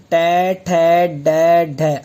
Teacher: आपने देखा होगा कि जीभ पलटी मारती है। जीभ ऐसे सीधी जाती है, फिर उल्टी पलटी मारती है और ऊपर तालु ऊपर छूती है, उसे बोलते हैं मूर्धा। तो वह स्थान हो गया मूर्धन्य।